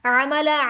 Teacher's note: عین بھی حلق کے درمیانی حصے سے یعنی وسط الحلق سے نکلے گا